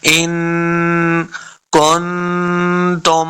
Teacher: یہاں پہ ہم نے اخفاء یعنی غنہ کر کے پڑھنا ہے